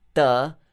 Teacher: It's not the one in English, ta, like tree, t. You don't actually touch your teeth, but in Sanskrit you touch your teeth. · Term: regular ta